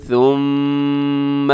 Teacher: یہاں میم مشدد ہے، یہاں پر آپ نے غنہ کرنا ہے